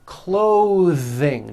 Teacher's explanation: notice how my tongue comes out in the middle of the word and the th sound is pushed Out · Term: voiced th